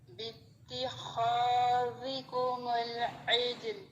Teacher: اور خا یہ ہیوی لیٹر ہے، اس کو بھی خا نہیں پڑھیں گے، خا موٹا کر کے پڑھیں گے